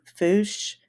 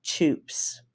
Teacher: the letter I, which tends to be pronounced as a U, as in the oo in blue. So for examples, fish would be foosh and chips would be choops.